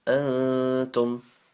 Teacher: we have to make a light nasal sound while hiding the N sound from the an, okay? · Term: ikhfa